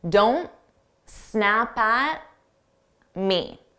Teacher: Native speakers will also drop sounds that force us to take a pause in the middle of a sentence. If I pronounce the T on don't, I have to take a pause to pronounce that T. So I just won't say it. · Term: drop the T's